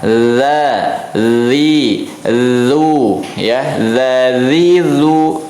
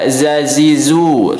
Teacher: Tidak ada shafir, tidak ada desis ya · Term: huruf za